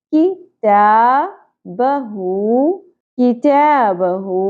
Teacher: کتاب. ہو ہاں الٹا پیش ہو 1 الف کے برابر کھینچنا ہے